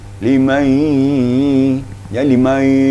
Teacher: Jadi hidung tu agak difungsikan waktu membaca idgham ma'al gunnah.